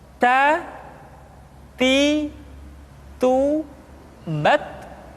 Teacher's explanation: Keluar dengan menyentuhkan ujung lidah kita dengan gusi-gusi gigi seri bagian atas. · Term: huruf ta